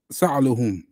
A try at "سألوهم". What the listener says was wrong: Make that wow long because it's a mud.